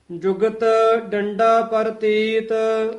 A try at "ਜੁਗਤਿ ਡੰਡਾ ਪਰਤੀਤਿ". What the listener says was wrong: ਹਾਂ, ਪ੍ਰਤੀਤ ਰਾਰਾ ਪੂਰਾ ਬੋਲਣਾ ਹੈ। ਪ੍ਰਤੀਤ ਨਹੀਂ ਕਹਿਣਾ, ਪ੍ਰਤੀਤ।